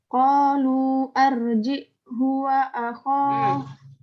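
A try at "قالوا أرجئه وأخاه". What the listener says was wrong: Arjihunya ada matnya itu, ada istilahnya.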